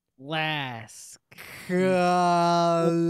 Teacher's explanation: there is still a schwa sound, however brief, between k and l, because there's no way to transition between the two without k.